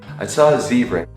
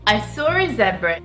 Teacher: The Americans say ah, and the English people say it more like oh.